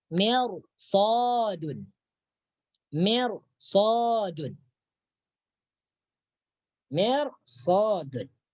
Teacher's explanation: Bahwasanya huruf isti'la itu ada 7 yang terkumpul dalam huruf khussa dautin qid hasr. Jadi apabila ada ra mati bertemu salah satu huruf isti'la yang ke-7, maka ra tersebut dibaca tebal.